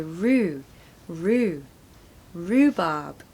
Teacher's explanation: well pronunciation tip you want to stress the first syllable Rue there's no h sound it's just a double o sound so Rue rhubarb no R sound in the second syllable rhubarb